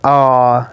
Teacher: It's a long low back unrounded monophthong.